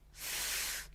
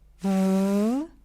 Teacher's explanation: Then we have labiodental, fricative, f, v, voiceless and voiced.